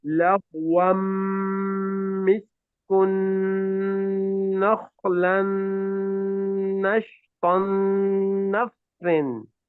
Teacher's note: you have a tanween followed by a meme, you merge them together with the gunna